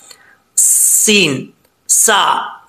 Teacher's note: सीन पढ़ते वक्त सीन में सीटी आएगी